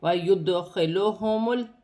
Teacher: دال ساکن ہے، حروف قلقلہ میں سے ہے۔ اپنے سے پہلے حرف کی حرکت کے ساتھ ملا کر پڑھا جائے گا، قلقلے کے ساتھ ادا کیا جائے گا